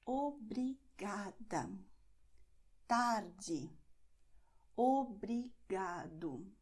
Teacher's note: It doesn't matter how long a word is, you see these endings, so you're going to stress not the last syllable, but the syllable before that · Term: second to last syllable